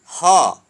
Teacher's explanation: ह है जिसका उच्चारण स्थान कंठ है। तो ये इसे हम कहते हैं ऊष्म वर्ण।